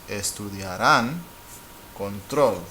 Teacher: The voice goes up at the end